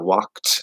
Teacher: the D here is a t sound because of the k